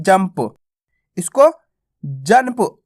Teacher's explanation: जंप आधा ना का उच्चारण नहीं करेंगे अपन य पर अपन इसका उच्चारण आधा मा के रूप में करेंगे